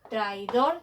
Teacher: traidor es una palabra aguda se acentúa en la última sílaba